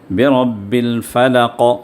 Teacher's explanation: اب یہ قاف پر جب ہم رکیں گے تو یہاں پر تھوڑا سا حرکت ہم دیں گے، تھوڑی سی حرکت دے کر ہم اسٹاپ کریں گے، اس کو کہتے ہیں قلقلہ۔